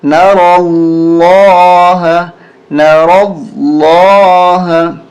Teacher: را بھی موٹی ہوگی اور یہ لام بھی موٹی ہوگی, اس لیے کہ اس سے پہلے والے حرف یعنی را پہ زبر ہے.